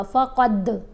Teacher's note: دال کے ساتھ جب ملائیں گے تو دال ساکن ہے نا یہاں پر کلکلا ہوگا